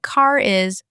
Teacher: the R suddenly comes back because now there's a vowel after it. K is actually sounds like car is, the R reappears.